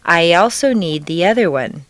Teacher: After a long E sound, your lips will be pulled back far enough to create a Y glide or liaison.